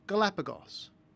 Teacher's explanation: It's pronounced s after a short vowel, Galapagos.